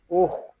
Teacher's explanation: خواہ حلق کے اوپر والے حصے سے ادا ہوگا